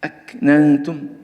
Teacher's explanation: التاء المضمومة لأنها تشبه الطاء فلا بد من ترقيقها، ولا نقول أكننت أكننت وليست عدم استعلاء في حرف التاء.